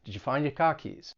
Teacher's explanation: it can be difficult to catch that the R is getting dropped